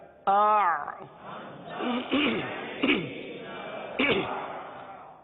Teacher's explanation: حرف آئین کو ادا کرنا ہے, اور آئین کا مخرج کیا ہے؟ وسط حلق